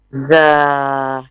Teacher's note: there will be a little gap between the upper and lower teeth. Z will have a whistling sound.